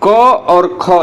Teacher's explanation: यह आवाज क ख की आपके कंठ से आ रही है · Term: कंठ ध्वनियां